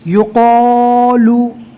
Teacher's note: بہت سے لوگ اس کو یوکالو پڑھتے ہیں۔ یوکالو پڑھنے جاتے ہیں تو یہ کاف بن جاتا ہے بجائے قوف کے۔ یہاں پر قوف لکھا ہوا ہے تو کاف اور قوف دونوں میں فرق کرنا ہے۔